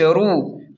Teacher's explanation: را کو پیش کی وجہ سے موٹا پڑھیں گے